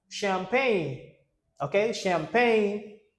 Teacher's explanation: this is when the ch sounds like sh.